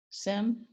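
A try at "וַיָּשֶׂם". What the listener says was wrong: So I'll do a more of a vaya, do more of a Y sound by the yud. Vayasem.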